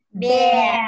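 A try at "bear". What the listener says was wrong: Đấy, chứ không phải bè đâu nhá. Không đọc là pe mà kéo dài này. Pè.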